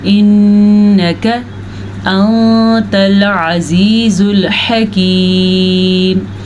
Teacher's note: काफ को लंबा करना जायज़ नहीं है और नून के ऊपर गुन्ना करना ज़रूरी है। नून और मीम ये दो वो हरूफ हैं जिनके ऊपर अगर शद आ जाए तो वहाँ पे गुन्ना पैदा होता है।